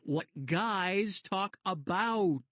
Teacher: We usually say them so quickly they sound like one vowel sound, but really there are 2 quick ones, diphthongs, in guys and about.